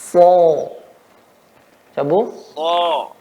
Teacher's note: Ujung lidah mengenai seri bagian bawah, kemudian ya tengah lidah naik ke atas, ya, dan suara naik ke atas.